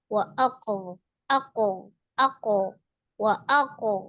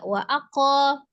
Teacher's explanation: wa aaq langsung di ee sukunkan ya kemudian qofi yang sukun itu dia qalqalah dipantulkan karena posisinya di wasal atau di tengah qalqalahnya masuk ke qalqalah sugra ya qalqalah kecil